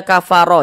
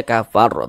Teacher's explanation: kita berhenti di huruf ro huruf ro tidak dibaca panjang Karena huruf ro tidak dibaca panjang dan kita berhenti di huruf ro maka huruf ro kita sukunkan sehingga dibaca kafar begitu huruf ro ini sukun kedudukan nya berarti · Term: ra sukun